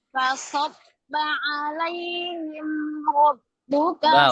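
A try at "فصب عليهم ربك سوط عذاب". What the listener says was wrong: Ulangi. Fasabba alai. Jangan alai. Kalau alai itu imalah. Alai. Alaihim ra. Mimnya harus jelas. Jangan alaihim ra. Alaihim. Tidak sempurna. Alaihim ra. Ro-nya pendek. Saya mencontohkan saja tadi ya. Alaihim rabbuka.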